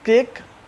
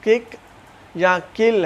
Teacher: मैंने टंग की जो अंदर वाली जगह थी वो वेलम के साथ टकराई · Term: वेलर साउंड्स